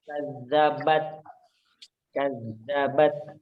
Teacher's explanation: Jadi ada sedikit udara yang keluar ya di huruf ta itu.